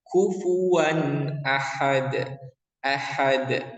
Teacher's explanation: Di sini ketemu dengan hamzah ya. Jadi jelas bacanya kufuwan kufuwan tidak boleh didengungkan. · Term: izhar halki